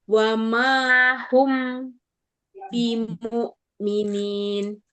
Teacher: Humnya tapi jangan dilepas dulu. Masih mingkem. Wama hum mim sukun ketemu ba.